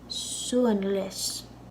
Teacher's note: I put a y in the pronunciation after the L in less because it's a slender L because an i comes after it so you're not saying Sue